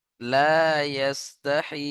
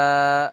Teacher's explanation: ইন্নাল্লাহ লা ইয়াস্তাহি, লাম আলিফ জবর লা, আলিফ মাদ্দা এক আলিফ টান দিয়ে পড়তে হবে। ইয়াস্তাহি, ইয়াসিন জবর ইয়াস, তা হা জবর তাহ, হা খাড়া জের ই, লা ইয়াস্তাহি।